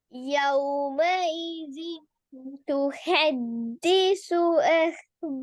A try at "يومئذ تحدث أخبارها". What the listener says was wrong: ஹேர்ட sound வரல. أخبارها. أخبارها.